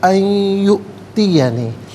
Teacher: یو میں اب دیکھیں حمزہ ساکن ہے، جھٹکے کے ساتھ پڑھا جائے گا